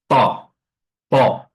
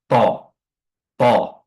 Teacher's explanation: makhrajnya itu adalah ujung lidah bertemu dengan ee ujung gigi seri atas th namun pangkal lidahnya terangkat sehingga dia menimbulkan efek ee tebal pada hurufnya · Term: huruf tha